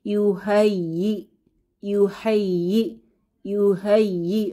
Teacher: হামজায়ের উপরে সুকুন আছে, তো একটু ধাক্কা দিয়ে বা ঝাঁকুনি দিয়ে পড়তে হবে